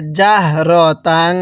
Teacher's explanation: তানবিনটার মধ্যে গুনাহ করব